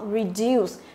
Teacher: Đấy thì trọng âm của nó rơi vào âm thứ hai